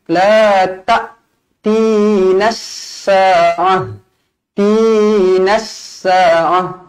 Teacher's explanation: Na walaupun ada alif tapi jangan baca panjang